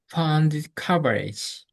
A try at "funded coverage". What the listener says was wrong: That's pretty good.